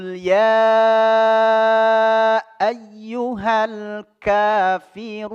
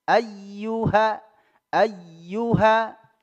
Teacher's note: ya tasdid punya eh hukum tersendiri annabr ya nabr dia dihentakkan